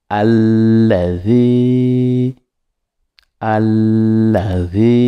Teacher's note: en tirant la lettre Z qui se prononce sur le bout de la langue